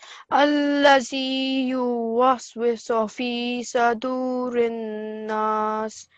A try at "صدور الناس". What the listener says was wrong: So have you heard how you said sadurinas? It's sodur. Sodurinas.